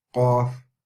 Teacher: so we know that the off comes from the furthest part of the mouth so the furthest part of the tongue touching the furthest part